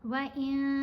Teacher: اخفا کرتے ہوئے نون کی آواز کو ناک میں چھپا کر پڑھتے ہیں۔ یہاں بھی اخفا کریں گے، یہاں بھی نون کو واضح نہیں پڑھیں گے۔